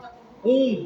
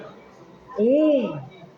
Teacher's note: Porque esse N tem uma função de N, ele só deixa o U nasal